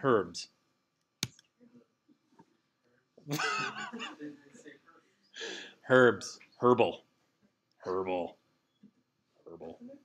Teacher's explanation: in Great Britain they're like they see an h and they've got to say it